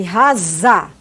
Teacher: A glote, ela vibra, né? Por quê? Porque ela está fechada. Então, vai vibrar porque o ar vai passar por lá e vai encostar nessa parede.